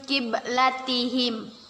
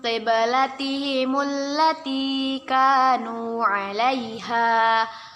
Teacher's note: Nun mati atau nun sukun bertemu dengan huruf qaf. Kita baca dengan samar-samar dan kita tahan 2 harokat. Kita sebut nun sukun bertemu dengan qaf, hukum bacaannya ialah ikhfa.